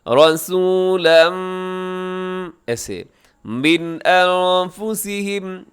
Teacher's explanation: اس لفظ کی تنوین کے بعد میم ہے، ادغام کریں گے غنے کے ساتھ